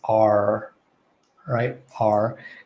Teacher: r with the american accent they'll enunciate that r